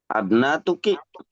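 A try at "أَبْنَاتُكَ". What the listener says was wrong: Ke laki-laki jadi tuka ka. Jadi ka bukan ki.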